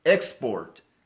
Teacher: please don't stress the second syllable please stress the first syllable